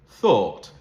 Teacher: You hear the or sound um in the thought lexical set